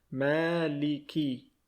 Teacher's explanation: You need to spend a little bit more time on ma, the letter M in English, because there's an alif right there.